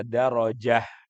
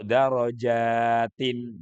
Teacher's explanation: kalau baca darojah pendek, tapi kalau darojatin jimnya dipanjangin sedikit